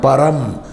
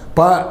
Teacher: Pa is short. Ram is long.